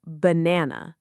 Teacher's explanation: It's actually more like banana with a soft schwah at the start and at the end.